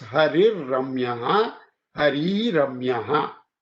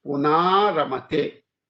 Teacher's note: So, harihi plus ramyaha. Now, this r is dropped and the preceding a, e, u, if short is made long